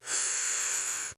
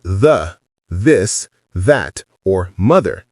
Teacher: The second one is the voiced TH, and it sounds like this, more like a vibration. When you say the, this, that, or mother, your vocal cords are actually vibrating.